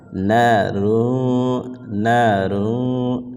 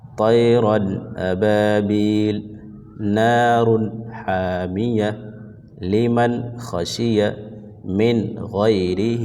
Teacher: مطلب وہاں پہ جو نون کا ساؤنڈ بنے گا اس کو ناک میں آواز نہیں لے جائیں گے بلکہ اس نون کو ظاہر کر کے بلا غنہ جلد پڑھیں گے۔ طیرن ابابیل، نار حامیہ، لمن خشی من غیرہ، یہاں پہ بھی نون ظاہر ہو گیا۔ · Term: اظہار